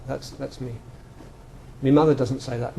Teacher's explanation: he's got a weak form of my which I don't have